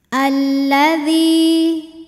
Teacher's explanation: lam tasdid Ini mengandung dua lam lam sukun dan lam fathah lam yang sukun tidak dibaca sehingga masuk langsung ke lam kedua diidghamkan alladzi D hukumnya adalah Mad Thobi'i ziri sebab ada Ya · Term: alif lam syamsiah